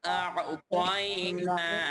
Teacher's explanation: আ'তাইনা, গলার ভিতরে আইন যেতে হবে। আ'তাইনা, তাই আমি দুটো একসাথে বলছি, ইন্না আ'তাইনাকাল কাউসার।